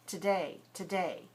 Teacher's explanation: And the O is pronounced it's schwa. So the whole first syllable has to be weaker. No puff of air.